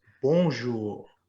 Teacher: after me bonjour bonjour almost you're almost not saying the n make it a nasal sound try to make the first syllable come through your nose